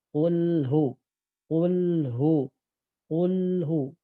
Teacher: Jadi ketika masuk kepada huruf lam, bibir kita sudah nggak manyun.